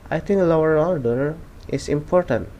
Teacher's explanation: if a word ends in an O sound, like low, and the next word begins in O, you will often hear a rah sound linking together. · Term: intrusive R